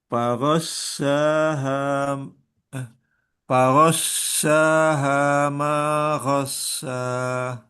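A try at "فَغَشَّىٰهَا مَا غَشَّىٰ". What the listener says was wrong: Kurang nyebar sehingga hampir ke sin bunyinya itu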